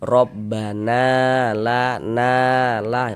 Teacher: mad thobi'i panjang dua harakat. Rabbana la na la panjangan begitu. · Nah, jadi kalau ada alif sebelumnya ada tanda baca fathah nih, maka huruf yang memiliki tanda baca fathah ini dibaca panjang, sehingga na dibaca panjang. Mad tabi'i panjang 2 harokat.